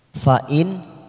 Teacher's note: Kita wakaf lagi di sini karena untuk menyesuaikan nafas kita ngambil wakaf di sini. Fa in nun sukun bertemu kha kita baca jelas tanpa mendengung namanya bacaan idhar halki